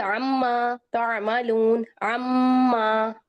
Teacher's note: میم مشدد ہے، عم کر کے اس کو بھی ہم ناک میں آواز کو چھپائیں گے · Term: غنہ